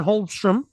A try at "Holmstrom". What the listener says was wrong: Did you just pronounce the L?